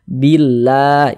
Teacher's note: maka lafaz Allah dibaca tipis baca tarkik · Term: lam jalalah